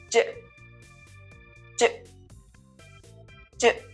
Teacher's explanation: The j sound is made through the mouth and is voiced, which means you vibrate your vocal cords to make the sound. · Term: affricate sound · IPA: [dʒ]